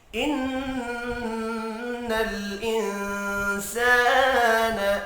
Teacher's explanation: جمعا فوسطن به جمعا ان الانسان، ان نون مشدد پر غنہ کریں گے، انسان نون ساکن کے بعد سین ہے، اخفاء حقیقی ہوگا، الف مدہ کو ایک الف کے برابر کھینچ کر پڑھیں گے۔